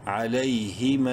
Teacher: تین الف کے برابر لمبا کریں گے میم کو